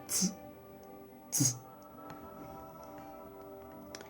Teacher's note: Entonces, repasando, tenemos este sonido que se escribe con la C cedilla o la C caudata, que es un sonido linguo-alveolar, africado sordo, que se pronuncia algo así como tz, tz.